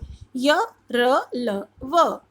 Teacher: जिन व्यंजनों को बोलने में जीभ मुंह के किसी भी हिस्से को पूरी तरह से नहीं छूती, वो अंतस्थ व्यंजन होते हैं